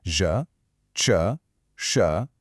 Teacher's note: These are the retroflex sounds. Cool name, right? It literally just means bent back. And that is exactly what you do with your tongue. You just curl the tip up and back a little bit.